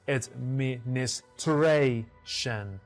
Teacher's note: The 4th syllable is stressed. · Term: stress shift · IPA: /ədˌmɪn.ɪsˈtreɪ.ʃən/